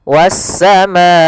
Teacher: panjangnya untuk mad wajib muttasil yaitu 4 harokat dalam riwayat Imam Syatibi atau 5 harokat